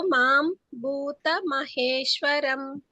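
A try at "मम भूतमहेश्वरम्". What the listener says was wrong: అక్కడ మమ అని ఉంటే మాం అని చదువుతున్నారు మీరు. ఓకే, భావ మజానంతో మమ భూత మహేశ్వరం.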